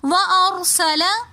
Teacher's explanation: یہاں پر را سے پہلے زبر ہونے کی وجہ سے اس را کو ہم نے موٹا پڑھا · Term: را کو موٹا